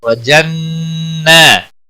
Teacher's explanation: نون مشدد پر گنہ ہوگا